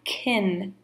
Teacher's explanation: the weak form in a sentence is going to have more of a short I kin sound